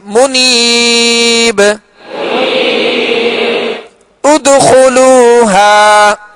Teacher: قلقلہ بھی کریں گے لہذا با جو ہے ساکن ہے اور حروف قلقلہ میں سے